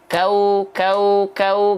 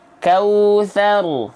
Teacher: Bukan madlin karena kaunya enggak dibaca panjang jadi jangan sampai bilang madlin